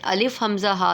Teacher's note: الف حمزہ ہا بھی حلق کے نیچے والے حصے سے ادا ہوتا ہے